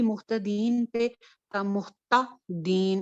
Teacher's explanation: تا کو نا سافٹلی پڑھنا ہے کیونکہ اس کے اوپر ہمس ہوتا ہے نا، اس کے اوپر ہمارا سانس چلتا ہے. اب یہاں پہ بھی مختدین پہ محتا دین، یہ تا کھڑک کر کے جو آواز تھک جا کے لگتی ہے دانتوں کے ساتھ آواز، وہ بری لگتی ہے.